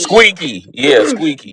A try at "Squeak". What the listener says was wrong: just squeak, not squeaky, squeak.